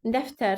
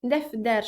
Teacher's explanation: Sonra bir qrup sözlər var ki, hansı ki, onlar t ilə yazılır, amma t ilə yazılsa da d ilə tələffüz olunur. Məsələn, mən yazıram, baxıram, tutaq ki, dəftər sözü t ilə yazmışam, amma bu sözü dəfdər şəklində əvəz edirəm, tələffüz edirəm.